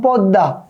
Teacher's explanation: এই যে এখানে ম ফলা আছে একটু ভালো খেয়াল করো ম এর কিন্তু উচ্চারণ হয়নি